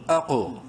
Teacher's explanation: قوف کو بولڈ لیکن ساتھ قلقلہ بھی کریں گے بیکاز وہ ساکن ہے